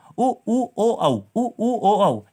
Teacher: ऐसे स्वर जिनके उच्चारण में हमारे होंठ गोल हो जाते हैं वो हमारे होते हैं वृत्तमुखी स्वर